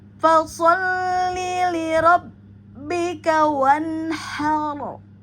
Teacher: apabila ro kita wakafkan maka akan terdengar atau terbaca tafhim ya tebal